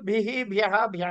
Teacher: ఎక్కడ సకారం ఉన్నదో అక్కడ హా వస్తుంది. అక్కడ ఆహా అని విసర్గ వస్తోంది.